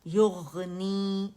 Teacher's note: یغنی 2 count کے لیے آواز نیچے جائے گی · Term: یا مدہ